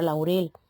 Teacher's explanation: la sílaba tónica en Laurel no cae ni en la a ni en la u sino en la última parte de la palabra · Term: dictongo